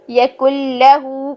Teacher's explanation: تو اب ہم کیا کریں گے کہ نون کی آواز کو بیچ میں سے ختم کریں گے کیونکہ ہم نے ادغام بلا غنہ کرنا ہے. تو پھر کاف کو ملا دیں گے لام کے ساتھ.